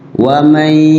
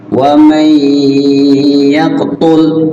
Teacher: ditahan di huruf gunnahnya tuh. Ada jedahnya, ada proses waktu barang 2 harokat paling sebentar ya, dan digunnahkan. Gunnah tuh lagu.